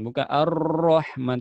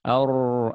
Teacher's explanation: Tapi ro-nya orang Arab pertengahan ya. Ada getarannya tapi tidak terlalu.